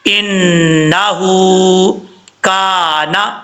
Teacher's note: واستغفر انہ، نون کے اوپر شد ہے، غنہ کیا جائے گا ایک الف کی مقدار، نون کے بعد جو ہا ہے ہا کے اوپر الٹا پیش ہے، اس کو ایک الف کی مقدار لمبا کر کے پڑھیں گے